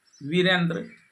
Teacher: यहां अ और इ मिलकर ए हो जाता है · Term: गुण संधि